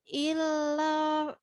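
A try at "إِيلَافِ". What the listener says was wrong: Jadi gini, sempurnakan i dulu barulah. Jadi kesannya nggak nempel. Ila. Sempurnakan i dulu baru kelah. Ila. Jadi kesannya nggak numpuk antara huruf alif sama lam itu kalau nggak diselesaikan dulu ila.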